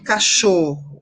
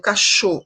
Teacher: O cho é a sílaba tônica.